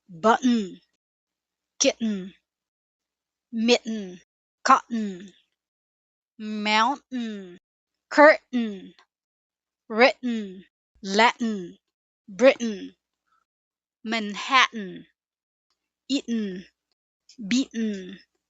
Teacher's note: When T comes before a syllabic N, or at the end of a stressed syllable, especially in casual speech, it can be replaced by a glottal stop, a tiny pause in the throat.